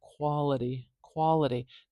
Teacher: with a very clear crisp t sound I'm saying Quality quality do you hear how that's kind of like a dull D sound it's almost like a d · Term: the tap